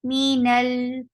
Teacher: Whenever there are these letter lin omar, any of this letter comes with sukoon will get sifa of tawassut. So minal, you will not stop lam abruptly, but give it a medium flow of sound.